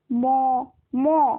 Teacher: ম উচ্চারণ করতে গেলেও নাকের ব্যবহার হয় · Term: নাসিক্য ধ্বনি